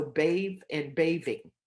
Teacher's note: the voice th becomes a v